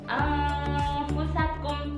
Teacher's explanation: Ikhfa awsat masa dengungnya sama, tidak panjang dan tidak pendek. · Cara membacanya adalah dengan mendengung seakan-akan ada huruf eng.